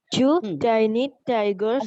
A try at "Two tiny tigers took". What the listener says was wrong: tiny. I heard that too, but the tiny went off. There was no plosive in tiny. See, each word starts with a plosive here.